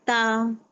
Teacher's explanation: मेरी जुबान की नोक जो है सामने के दो दांत के पिछले हिस्से से लगने से ता अदा होता है।